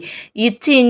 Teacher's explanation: நாவின் இடைப்பகுதி நடு அன்னத்தின் இடைப்பகுதி